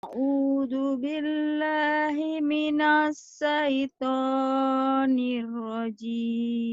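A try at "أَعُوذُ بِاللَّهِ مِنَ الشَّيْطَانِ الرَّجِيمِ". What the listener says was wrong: Shinnya lupa ya. Himinash gitu. A'udzu billahi minash.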